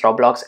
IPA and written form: ˈroʊblɒks (Roblox)